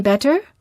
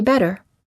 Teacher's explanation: This sound is also sometimes called a tapped T because you quickly tap the tip of the tongue on the gum ridge.